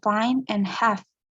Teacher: Air is forced through the upper teeth and lower lip.